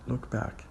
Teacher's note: looked back becomes look back. We tend to drop the T sound.